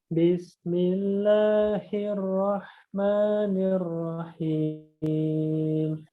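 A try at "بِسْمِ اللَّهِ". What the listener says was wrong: Nah, bismillah jangan bismillahir, tapi bismillahi dari tenggorokan bawah ya. Dari tenggorokan bawah. Hi, ha, hi. Bismillahirrahmanirrahim.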